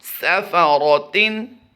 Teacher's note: सीन को सिटी के साथ अदा करेंगे